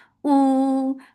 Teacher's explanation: for dhamma circular, let's make it 2 counts long